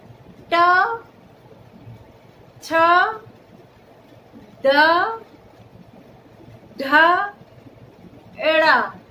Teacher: जो जीभ का हमारा अग्रभाग है, आगे का हिस्सा है, वो हमारी मूर्धा को यानी ऊपर के तलवे को छूता है, जीभ के ऊपर की छत को छूता है, तो उसे हम कहते हैं मूर्धा।